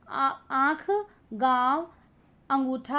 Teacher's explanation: मुंह से ज़्यादा आँख, गाँव, अंगूठा आदि। इसमें म की ध्वनि और न की ध्वनि का अभाव रहता है · अनुनासिक में मुंह और नाक दोनों से हवा निकलती है